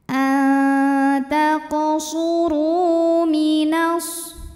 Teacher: Thobi'i dahiri karena ada wau sukun yang didahului baris damah maka huruf ro ini panjangkan dua harakat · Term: Mad Thobi'i